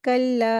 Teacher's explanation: कल्ला का जो लाम है उसको चार हरकत खींचेंगे